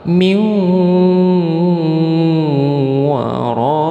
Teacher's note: nun mati bertemu dengan wau. Jadi hukum bacaannya idgham bighunah. harus dimasukkan ke wau. Nunnya hilang jadi berganti wau. Tapi harus didengungkan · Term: idgham bi gunnah